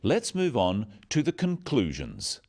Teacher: stressing conclusions because it's the key word in this sentence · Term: sentence stress